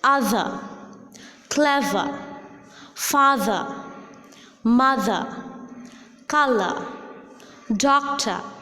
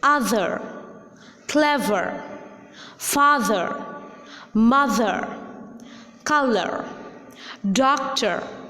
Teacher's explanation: when the letter R is in the final position of a word, it is again dropped in British English, but it is quite prominent in American English